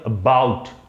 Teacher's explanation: we are putting stress on the second syllable, बाउट